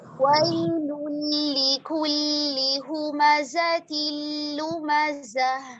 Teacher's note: लाम साकिन पर ना इतना ज्यादा नहीं रुकेंगे. वैलुल लिकुल्ली नहीं, ये ज्यादा टाइम हो रहा है, सिर्फ तवस्सुत.